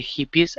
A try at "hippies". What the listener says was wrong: Let's take a look at the word hippies first. Give me a short I there at the beginning instead of hippies. It's hippies. So the second I is going to be an E sound. Okay, so it's hippies. Hippies.